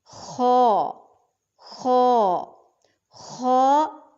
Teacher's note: خا ادنی الحلق سے ادا ہوگا